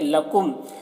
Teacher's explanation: یہ میم میں ادغام شفوی ہو رہا ہے، اسے غنہ کے ساتھ میں پڑھیں گے